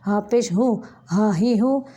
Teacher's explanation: ये दोनों अक़साए हलक यानी हलक का वो हिस्सा जो सीने की जानिब है वहाँ से निकलते हैं